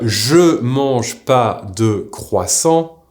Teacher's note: the negation word NE will either completely disappear or if it doesn’t fully disappear we will pronounce it as a barely audible N